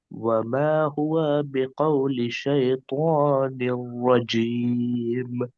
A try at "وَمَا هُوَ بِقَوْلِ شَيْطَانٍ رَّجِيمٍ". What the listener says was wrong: وما هو بقول شیطان الرجیم. وا کو نہیں کھینچنا ہے، وا متحرک ہے نا. وما هو بقول شیطان الرجیم.